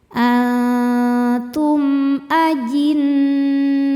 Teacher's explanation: Karena mim sukun menghadapi huruf selain mim dan ba yaitu hamzah. Cara bacanya mim dibaca jelas. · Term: idhar syafawi